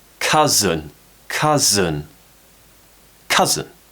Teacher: Remember that stress is on the first syllable, so it's stronger, more power on that first syllable.